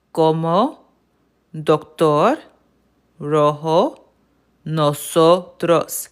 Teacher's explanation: each one of those O's sounded the exact same? There is no long, there is no short, any of that. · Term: Spanish O